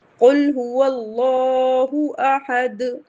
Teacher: دال پہ قلقلہ ہو رہا ہے کیونکہ ہم یہاں وقف کر رہے ہیں، رک رہے ہیں۔ قل هو اللہ احد، اور اگر اسے ملا کے پڑھیں گے تو قل هو اللہ احد اللہ الصمد، ایک نون قطنی لگا دیں گے، کیوں؟